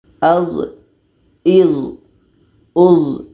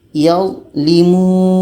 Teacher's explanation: Karena za ini sifatnya jahar, tertahan anginnya.